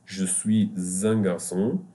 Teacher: Here we pronounce the S like Z because there is a vowel after it. It can be je suis un garçon, but we say here because of this vowel, we say je suis z.